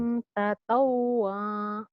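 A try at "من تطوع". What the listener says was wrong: Salah kenapa jadi panjang. Man tatawwa. Tatawwa. Kosar ya pendek.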